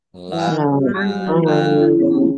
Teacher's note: Allahnya dibaca tebal karena harokat di depannya domah. Lam fathah berdiri mat tobi'i, tetapi karena bertemu dengan huruf terakhir yang dibaca sukun karena wakof, maka menjadi mat arid lis sukun.